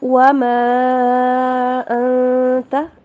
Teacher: انت کے اوپر اخفا ہوگا